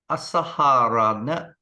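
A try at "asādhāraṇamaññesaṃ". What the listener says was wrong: There's no H. No H here. Asadhara. Asadharana manyesam.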